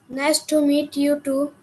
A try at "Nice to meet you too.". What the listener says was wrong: ওকে, একটা রোবোটিক ভাবে বললে হবে বাবা। যখন কাউ গ্রিট করছো, কারোর সাথে গ্রিটিংস রাখছো, তখন একটু উৎফুল্ল হয়ে একটু মুখে হাসি রেখে দেন তোমাকে গ্রিটিংসটা জানাতে হবে।